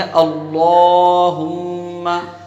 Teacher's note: میم جب ادا کریں گے تو اس کے اندر ایک الف کے برابر رکیں گے، ٹھہریں گے، ناک کے اندر آواز لے جائیں گے